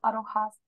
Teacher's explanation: Pero en el I don't have, yo no pronuncio la T. La T no la pronuncio.